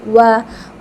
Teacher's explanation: वाव के लिए आपने होंठों को मस्ट राउंड करना होता है। जब आप इसको लाजमी राउंड करके पढ़ते हैं ना तो साउंड बहुत अच्छी निकलती है, वाह।